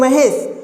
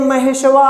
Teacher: हम कहते हैं महेशवा, एक लंबा समय लगता है, अर्थात 2 मात्रा से ज़्यादा समय लगता है। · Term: प्लुत स्वर